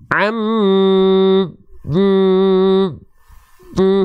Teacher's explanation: huruf nun bertasdid dan mim bertasdid karakter gunahnya Akmal kuat sempurna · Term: gunah Akmal